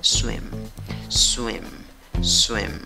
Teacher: tiene una y pero una y cortita no la hagas larga